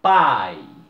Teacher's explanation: porque ele começa com um A forte, pai, e o I sai fraquinho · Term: Ditongo decrescente